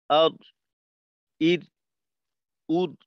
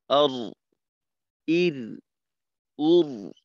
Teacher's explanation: আওয়াজটাকে একটু ধরে রাখা, আওয়াজটা যেন মাখরাজে যাওয়ার সাথে সাথে বন্ধ হয়ে না যায়